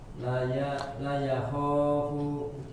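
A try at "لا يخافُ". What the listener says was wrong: Apa yang kurang panjang? Lanya panjang Pak Haji. La yakho gitu ya.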